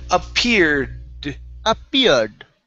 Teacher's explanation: you're pronouncing that r okay but we want to pronounce the d at the end as well